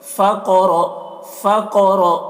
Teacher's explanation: قاف کو پر پڑھیں گے اور قاف میں قلقلہ کریں گے کیونکہ قاف حروف قلقلہ میں سے ہے اور اس کے اوپر جزم ہے، اور را کو پر پڑھیں گے، را کے اوپر زبر ہے۔